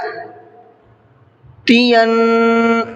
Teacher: نون پر تشدید ہے تو نون میں بھی غنہ کریں گے۔